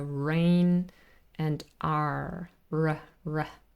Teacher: I can feel it my tongue is curved back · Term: American R